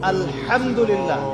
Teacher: এই হা এর মাখরাজ কোথায়? কণ্ঠনালীর মাঝখান থেকে।